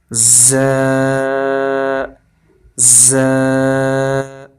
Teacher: زبان ہمارے نیچے والے دانتوں کے کنارے کے ساتھ لگی ہوئی ہے زبان کی نوک، یہاں سے زیادہ ہوگا، اس کو ذرا سختی سے پڑھا جائے گا۔